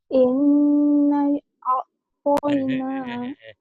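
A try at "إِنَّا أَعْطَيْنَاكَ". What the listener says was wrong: Innanya ditahan dulu kan ada alisnya tuh. Inna. ditahan. N-nya ya. Nah-nya lebih lagi. N-nya ditahan karena itu kenapa speakernya kegerubukan begitu?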